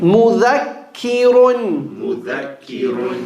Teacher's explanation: Remember, kaf is light, ra is heavy.